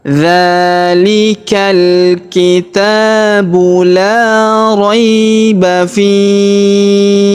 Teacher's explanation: Huruf ba kita qalqalahkan atau kita pantulkan. Kalau di sini kita berhenti maka huruf fi kita panjangkan 2, 4 atau 6 harokat. Kemudian huruf hi di ujung kita sukunkan ya.